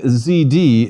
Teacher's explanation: Zeta buzzes more in Greek because we should insert a D sound as well